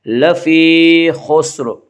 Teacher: یہاں را کے نیچے زیر ہے، اس لیے را کو باریک پڑھیں گے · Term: را مرامہ